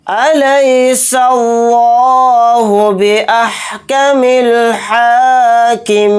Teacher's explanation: इस लफ्ज़ अल्लाह के लाम को मोटा यानी पुर भी पढ़ेंगे क्योंकि इस लफ्ज़ अल्लाह के लाम से पहले ज़बर है, इसलिए लफ्ज़ अल्लाह का लाम मोटा यानी पुर पढ़ा जाएगा।